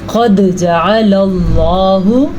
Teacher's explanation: دال کے اوپر ساکن ہے تو دال پہ کلکلا ہو رہا ہے